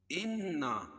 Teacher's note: نون مشدد ہے، نون مشدد میں غنہ ہوتا ہے، اور نا الف مدہ